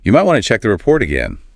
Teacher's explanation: Furthermore, when you use that specific modal phrase, the pitch of your voice naturally raises slightly at the end of the sentence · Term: upward inflection